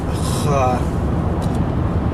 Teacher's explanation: kha is also a very similar point of articulation to ha. I think it's a little bit higher up.